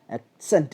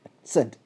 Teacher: Stress സെൻറ്റ് എന്നിടത്തേക്ക് വരും.